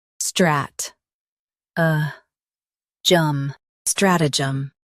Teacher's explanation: Stress strat and keep jum light.